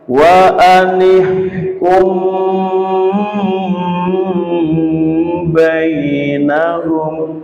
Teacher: Mim sukun bertemu dengan ba dibaca dengung dengan lama.